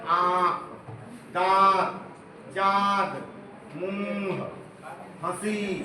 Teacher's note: वे वर्ण जिनके उच्चारण में हवा, नाक और मुंह दोनों से बाहर निकलती है उसको अनुनासिक कहते हैं